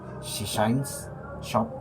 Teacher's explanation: Tipsnya, fokusnya yaitu es panjang shines shop versus pendek sushi se. Tipsnya untuk es panjang berbentuk bibir seperti akan meniup lilin lidah sedikit ke belakang